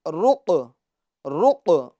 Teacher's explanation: قاف میں قلقلہ کریں گے کیونکہ یہ حروف قلقلہ میں سے ہے